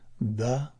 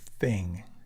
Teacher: a voiced and unvoiced interdental fricative is the difference between the and thing